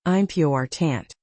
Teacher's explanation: in the word important, the stress falls on the second syllable, important.